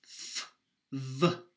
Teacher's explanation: Then there's labiodental. This is your bottom lip against your top teeth.